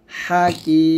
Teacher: হাকি কিতে আমরা 3 আলিফ টান দিয়ে তারপর মিমটাকে গিয়ে সাকিন করে ফেলবো